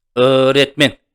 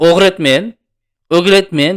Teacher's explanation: O cho'ziladi, retmen qo'shib qo'yasizlar.